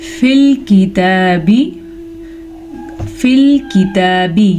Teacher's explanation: ये बारीक काफ है, इसे हम नरमी से पढ़ेंगे और ता के ऊपर खड़ी ज़बर है तो खड़ी ज़बर को हम खींच के पढ़ेंगे।